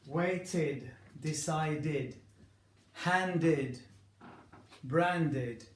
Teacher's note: when the letter before e d is a t or a d you will pronounce that ID you will add that syllable